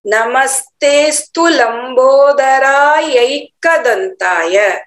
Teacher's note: नमस्ते अस्तु नहीं बोलेंगे, एक साथ बोलना है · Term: अवग्रह